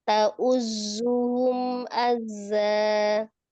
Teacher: Jangan berubah zai itu ya. Tasdid dua-duanya zai, bukan ta'uzjuhum, enggak juhum, zuhum tetap ta'uzzuhum azza. · berubah di juhumnya itu juhum. Di ini ada asofirnya ya, desisan di zainya.